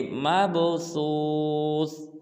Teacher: مب میں با کو قلقلہ کریں گے